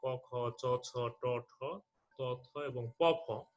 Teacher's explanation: তো বর্গের প্রথম এবং দ্বিতীয় যে সারি দুটি রয়েছে, এই দুটি সারির যে ধ্বনিগুলো রয়েছে, যেমন ক, খ, চ, ছ, ট, ঠ, ত, থ এবং প, ফ, এগুলো উচ্চারণের সময় স্বরতন্ত্রী কাঁপে না, এই কারণে এগুলোর নাম হচ্ছে অঘোষ ধ্বনি